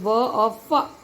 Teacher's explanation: दव्योष्ठ्य जो दो ओष्ठों के बीच में से आती है आवाज